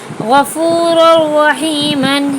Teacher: یہاں تنوین کے بعد را آیا تو بلا غنہ کے ملا کر پڑھیں گے۔